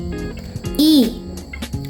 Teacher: It's a near high, front, unrounded vowel sounds. It's sometimes called a short E.